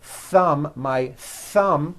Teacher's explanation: a th sound where your tongue comes out between your teeth